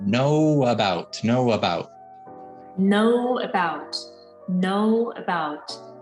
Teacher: when we open up quickly to say the ah sound the schwa sound at the beginning of about we're going to get a little bit of a coming out